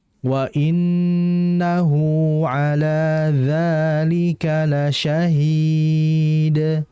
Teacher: mad arid di sukun ini merupakan mad yang masuk kategori yang far'i yang dibaca dua harakat lebih. Nah, jadi harus dibaca panjang.